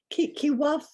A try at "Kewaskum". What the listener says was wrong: No, there is an S. Kewaskum. SK, yeah.